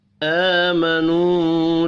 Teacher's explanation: حمزہ کے اوپر کھڑی زبر ہے، 1 الف کے برابر کھینچ کر پڑھیں گے۔ واو مدہ کو بھی 1 الف کے برابر کھینچ کر پڑھنا ہے۔